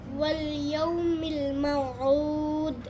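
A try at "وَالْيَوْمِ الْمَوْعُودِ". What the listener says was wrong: এটা তো কলকলা করতে হবে, কলকলাটা হয়নি, বুঝতে পারছো?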